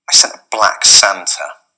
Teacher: dropping the T on sent and then linking it to a